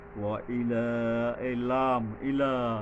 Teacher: লা এর উপরে এক আলিফ খারা জবর আছে টানতে হবে